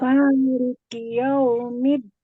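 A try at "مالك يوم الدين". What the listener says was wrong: Nah, ini ya, kiyau, bukan yau ya, Mbak? Ini kesalahannya biasanya bibirnya kurang maju. Yau. Jadi kita benar-benar mengucapkan ya. Yau, maliki yaumiddin. Memang perlu pembiasaan ya untuk au itu ya, huruf-huruf lin ya, itu benar-benar kita mengucapkan yau, bukan yao. Kalau bibir kita itu posisinya masih biasa aja, biasanya yang keluar masih masih maliki yau. Yau, nih lihat bibir saya ya, yau.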